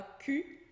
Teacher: a gente fala cul, tem um L ali, mas a gente não pronuncia.